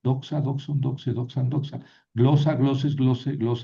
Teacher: las dos palabras son paroxítonas. El acento no lo tengo que mover.